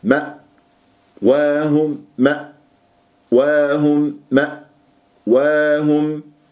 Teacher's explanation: فلازم نقفل الأوتار الصوتية جيدا من غير قلقلة أو همزات متكررة